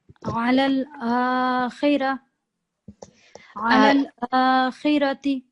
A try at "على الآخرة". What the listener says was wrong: على الآخرة. Just make the ra a little bit thicker when you read it.